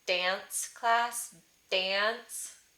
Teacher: It is an ah followed by an n, and it would nasalize.